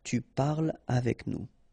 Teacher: tu parles avec nous, so no liaison here between parle and avec